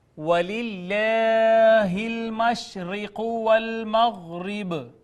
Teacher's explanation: اس میں جلالت ما قبل مکسور ہونے کی وجہ سے مرقق پڑا